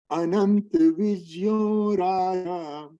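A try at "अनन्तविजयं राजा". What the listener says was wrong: Anant Vijayam. Ananta. Give one a. Vijayam. Give one akara over there. Vijayam. Ananta Vijayam Raja.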